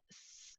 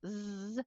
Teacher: can't tell a difference right because the place is the same the place and the way my articulators my tongue and my teeth and everything work are the same but my vocal cords are turned on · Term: voiced pair